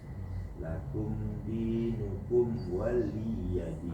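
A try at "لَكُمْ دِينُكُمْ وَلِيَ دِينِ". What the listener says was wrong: Enggak panjang. Pendek. Waliyadin.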